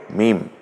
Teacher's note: মিম উচ্চারিত হয় দুই ঠোঁটের শুকনো অংশ থেকে